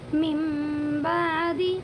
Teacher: نون ساکن کے بعد با آیا ہوا ہے، اسی لیے نون کی آواز کو میم میں بدل دیں گے